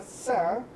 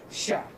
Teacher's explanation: Sa contrasta con la fricativa palatal sha, que en algunas variantes son solamente variantes fónicas.